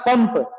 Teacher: क्योंकि प वर्ग का अनुनासिक है म, प फ ब भ म, आया समझ में।